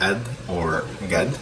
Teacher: Now the word qad, because it has qaf, you can say it ad or gad